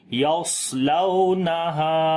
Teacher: صاد کو موٹا پڑھیں گے، صفت استعلا ہے اس کے اندر، صفت اطباق بھی ہے ، استعلا کے اندر موٹا پڑھا جاتا ہے اور صفت اطباق